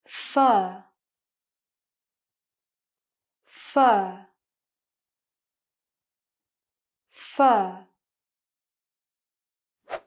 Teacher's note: The sound is also a long vowel sound, very deep, but my tongue is in the middle area of my mouth. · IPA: /ɜː/